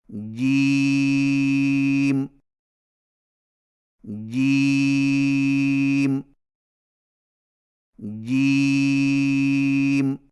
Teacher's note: जिम की अदायगी में जुबान के दरमियान को तालू के साथ सख्ती से लगाकर बारीक आवाज में पड़े · جیم کی ادائیگی میں زبان کے درمیان کو تالو کے ساتھ سختی سے لگا کر باریک آواز میں پڑھیں، یعنی جیم جیم جیم، اور یاد رکھیں کہ جیم کی ادائیگی میں چے کی آواز مکس نہ کریں، یعنی جیم جیم جیم، اور یہ صحیح نہیں۔